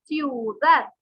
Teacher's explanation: Ciudad lleva la mayor fuerza de voz en dad, aunque no se tilda, pero considerada una palabra aguda.